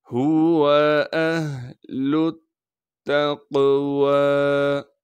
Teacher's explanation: پھر تا کو ہم قاف سے ملائیں گے کیونکہ قاف ساکن ہے، قاف کو موٹا کر کے پڑھیں گے، اور قاف پر ہم قلقلہ بھی کریں گے۔ واو پر کڑا زبر ہونے کی وجہ سے واو کو 1 الف کے مقدار کھینچیں گے